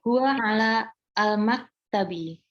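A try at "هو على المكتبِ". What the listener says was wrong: Oke, coba langsung al-maktabinya langsung disambung. Huwa alal maktabi.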